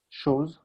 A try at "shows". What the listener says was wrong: Shows. You said so's. So make sure you get that sh sound with that. Just a small pronunciation accuracy, but of course that would still take away from your pronunciation mark. So just pay attention to words like that.